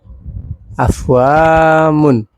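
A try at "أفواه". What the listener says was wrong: Huruf terakhir bukan mim. Diganti. Huruf ketawa. Kalau ketawa gimana? Ketawa di tulisan. Iya, berarti.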